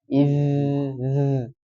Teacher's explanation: Rakhwah mengalir. Jadi bukan hames. Jadi tidak nafasnya to id.